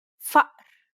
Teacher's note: The second sound is actually deeper in the throat than the first, so deep in fact that it causes the vocal cords to stop momentarily, causing a buildup of pressure. It's the sound you make in between the and o in uh-oh.